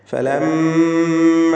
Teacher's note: ഫലമ്മ, ഇവിടെ മീം മുശദ്ദദയെ മണിക്കണം.